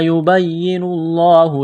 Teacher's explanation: لفظ اللہ کے نام سے پہلے پیش ہے، لفظ اللہ کے نام کو موٹا کرنا ہے